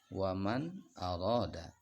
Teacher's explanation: Nun matinya dibaca jelas tidak boleh dibaca dengung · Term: izhar halqi